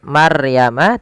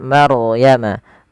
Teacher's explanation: Kemudian balafal Maryama, di sini ada bacaan ro tafkhim, yang dimana ro-nya wajib kita, bukan wajib, ro-nya dibaca dengan tebal. Ya, tidak dibaca dengan Maryama, tapi dia Maryama.